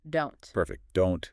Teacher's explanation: tongue goes up, stops the air. No strong t sound. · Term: stopped T